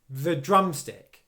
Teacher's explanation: Drum is much louder than the, and produces more force.